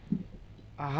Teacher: হলকের শুরু হতে আওয়াজ, সহজে আওয়াজ হবে বাংলার হয়ের মতো, হা যাবার হা হয়ে গেল। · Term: গোল হা